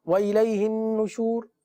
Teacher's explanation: یہاں پر نون پر غنہ ہوگا کیونکہ نون مشدد ہے